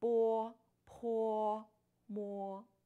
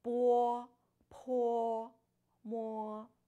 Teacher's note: after B, P, M, you should add a wu sound in front of O